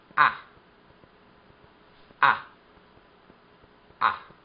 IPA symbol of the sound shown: æ